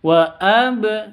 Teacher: harus mati cara bacanya dipantulkan